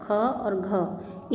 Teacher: अंत में ह जैसी ध्वनि सुनाई देती है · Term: महाप्राण